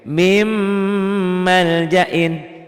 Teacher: dibacanya n-nya hilang, dimakan m, jadi dilebur masuk ke m. Mim maljain disertai dengan ditahan dan ada dengungnya. Karena ini memang idgham bi gunnah.